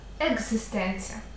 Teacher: звук якою є і Літера в слові екзистенція з є дзвінкем к перед дзвінким перетворюється на свій дзвінкий відповідник Ґ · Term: асиміляція за дзвінкістю